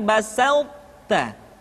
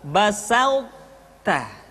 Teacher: ketika mengucapkan to bertemu dengan ta, terdengar suara yang menebal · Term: sifat itbaq